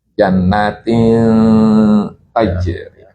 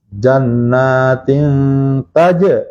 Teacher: Jadi ketika mengucap nun lidah itu sudah dekat ke huruf ta. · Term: ikhfa aqrab